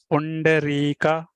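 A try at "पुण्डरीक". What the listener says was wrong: Very good. Puna, not Punna. Puna.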